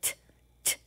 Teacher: touch your throat make the t t sound is it vibrating no it's not